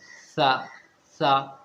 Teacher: हमारी ज़बान की जो टिप होती है, ज़बान की जो नोक होती है, सामने के जो हमारे दांत होते हैं ऊपर वाले चौड़े वाले जो दांत होते हैं ना, तो वहाँ पर उनके नीचे ज़बान की टिप को लगाओ, ज़बान की नोक को लगाओ तो सा निकलेगा।